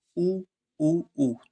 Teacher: तो आपके जो होठ है ना ये बिल्कुल गोल बन रहे हैं दोनों, तो कहाँ से आपके होठों से ये आवाज आ रही है। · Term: ऊ ध्वनि